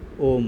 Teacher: ओम कभी भी आप झटका में नहीं बोलते हैं ओम खिंचाव के साथ बोला जाता है